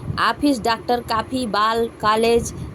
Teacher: इसका उच्चारण आ तथा ओ का मध्यवर्ती है